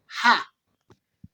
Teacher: This sound is voiceless. It means it doesn't have vibration in the vocal cords. We produce it by pushing air from the throat without blocking it.